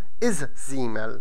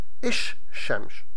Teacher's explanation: the L in the article changes into the consonant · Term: sun consonants